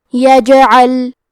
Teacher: حرف العین کے ادائیگی حلق کے درمیان والی حصے سے ہے